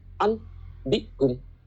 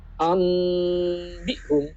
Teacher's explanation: Yaitu apabila ada nun sukun atau tanwin, ya, nun sukun atau tanwin an, input bertemu dengan ba, maka nunnya ini atau tanwinnya ini harus diganti menjadi bunyi mim, gitu, disertai berdengung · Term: iklab